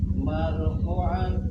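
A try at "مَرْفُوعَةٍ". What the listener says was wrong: panjang marfu'atin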